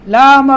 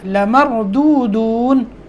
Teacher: لام کو لمبا نہیں کرنا، لامر نہیں پڑھنا، لمردودون.